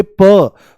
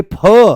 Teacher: इनके बारे में बोला जाता है महाप्राण पेट से बोले जाते हैं। तो जैसे ही आप बोलोगे प, तो प आराम से बोला जाएगा, और जैसे ही बोलोगे फ, तो फ एकदम से कहां से आएगा? पेट से आएगा, ज्यादा दम लगाना पड़ेगा।